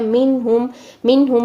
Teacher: नून साकिन के बाद हा आ रहा है तो हम आवाज को जाहिर करेंगे नून का इजहार करेंगे